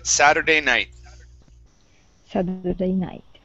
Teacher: Give me a good flap T sound instead of sadur, sadder, Saturday.